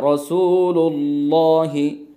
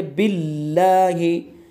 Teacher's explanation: तो अल्लाह के लाम का कायदा ये हुआ कि अगर अल्लाह के लाम से पहले वाले हर्फ पर ज़बर और पेश होगा तो अल्लाह के लाम को पुर यानी मोटा और मुँह भर के पढ़ेंगे, और अगर अल्लाह के लाम से पहले ज़ेर होगा तो अल्लाह के लाम को बारीक पढ़ेंगे।